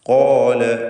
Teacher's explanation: ഖാല വീണ്ടും ഖാഫും അലിഫും ദീർഘാക്ഷരമായ അലിഫിനും തഫ്ഖീം കൊടുത്ത് ഉച്ചരിക്കുക.